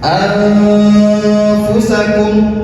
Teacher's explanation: Fa adalah salah satu huruf ikhfa. Cara membaca nunnya disamarkan dan tidak dijelaskan.